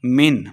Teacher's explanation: من بغیر غنہ کے پڑھیں گے، اظہار کا قاعدہ ہے